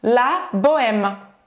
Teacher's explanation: esse E parece que nem existe quando você usa essa palavra numa frase na vida real